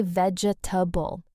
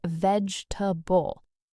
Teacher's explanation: A lot of people say vegetable, 4 syllables, because that's exactly how it looks. But native speakers actually say vegetable, 3 syllables. The second E just disappears.